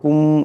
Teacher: মিম সাকিনের পরে মিম আসছে, ইদগাম হয়ে যাবে, একালিফ পরিমাণ গুণনা হবে